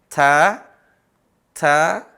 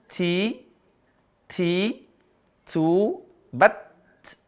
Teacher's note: Di situ ada huruf ta. Ta itu ada desis sedikit. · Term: hamas